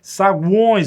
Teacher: Saguões, você ouve o U, você ouve o O e você ouve o E, na mesma sílaba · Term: tritongo